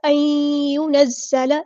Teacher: نون ساکن کے بعد یا ہے تو ادغام ہوگا یہاں پہ